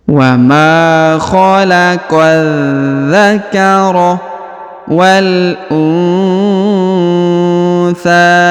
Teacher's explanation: Ya, huruf tha-nya dipanjangkan ya 2-3 harokat.